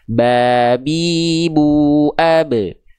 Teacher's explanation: melafalkan huruf B pada abjad alfabet kan cukup dengan menyentuhkan bagian bibir atas dan bibir bawah kita saja. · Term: huruf ba